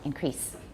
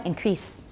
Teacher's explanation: There's no Z. It's voiceless, so E is a little bit short.